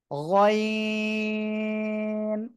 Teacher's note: গলার শেষ ভাগ অর্থাৎ জিহ্বার গোড়ার কাছাকাছি জায়গা থেকে তিন আলিফ টান হবে।